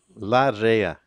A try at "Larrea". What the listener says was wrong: You have to roll that R. Double R.